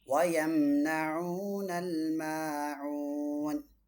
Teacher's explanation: இங்கே 4 அலிஃப் மத் ஆரித் லில் சுக்கூன்